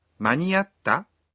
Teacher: Here, is asking a question, so she says, 間 に 合 っ た？ with a rising intonation.